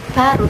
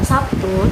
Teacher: fonem B pada kata baru diucapkan B, tapi dalam kata sabtu diucapkan sebagai P. Jadi realisasi fonem B dalam pelaksanaan bisa menjadi B dan P. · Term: alofon